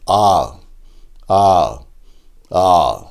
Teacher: ஆ என்று சொல்லுகின்ற போது வாயை நன்றாக திறக்க வேண்டும். நாக்கு நன்கு கீழ் நோக்கி சென்றுவிடும்.